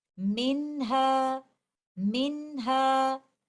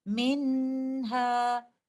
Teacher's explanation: We will recite noon sakina clearly and we will give it the timing of incomplete gunna